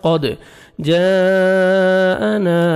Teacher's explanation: دال حروف قلقلہ میں سے ہے ڈبل ساؤنڈ آئے گا